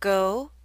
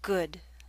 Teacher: Your mouth should be more tense and your lips should be more rounded for the O in go.